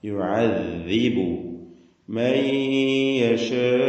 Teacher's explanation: ദാലാവട്ടെ നാവിന്റെ അറ്റം മേലെ മുൻപല്ലും. ദാല് റിഖ്വായി ഉച്ചരിക്കേണ്ട അക്ഷരമാണ്, ലൂസാക്കി അയവോടുകൂടി.